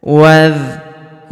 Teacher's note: Kemudian wuru huruf wa langsung sambung masuk ke huruf dza yang berharakat sukun langsung masuk ke sini alifnya tidak dibaca ini hamzah wasal hamzah penyambung antara kata sebelumnya dan kata setelahnya wazkuruh huruf ru kita panjangkan dua harakat karena wau sukun di depannya